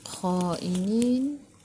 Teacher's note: Matikan dengan huruf nun. Hujung lidah menyentuh gusi atas ataupun hujung lidah menyentuh langit keras di bahagian depan.